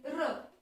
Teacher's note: र या वर्णाचा उच्चार करताना कंपन होतं म्हणून या वर्णाला कंपित वर्ण असे सुद्धा म्हणतात.